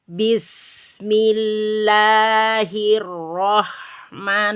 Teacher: Jadi tidak boleh diputus antara bis dan mi ya. Harus disambung. Itulah sifat rohwa yang berada pada huruf sin.